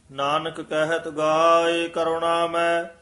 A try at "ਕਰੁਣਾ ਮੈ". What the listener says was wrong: ਕਰੁਣਾ ਮੈਂ ਨਾਣੇ ਨਾਲ ਨਹੀਂ ਹੈ, ਨੰਨਾ ਹੈਗਾ। ਤੇ ਕਰੁਣਾ ਮੈਂ, ਇਹ ਵੀ ਮੈਂ ਹੀ ਉਚਾਰਨ ਕਰਨਾ, ਸੰਬੰਧਕ ਪਾਠ ਹੈ।